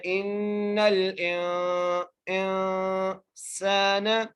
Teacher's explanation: سین کو سیٹی کے ساتھ ایک الف کی مقدار کھینچ کے پڑھنا ہے. نون کے اوپر زبر ہے, بغیر کھینچے پڑھنا ہے. · نون کو لام سے ملا رہے ہیں. ان حمزہ کو نون سے ملاتے ہوئے بھی ہم غنہ کر رہے ہیں, یعنی یہاں پر اخفا ہو رہا ہے